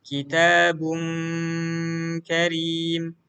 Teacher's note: ini tanwin nun sukun ketemu kaf, maka engnya seperti sempurna gitu ya. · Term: ikhfa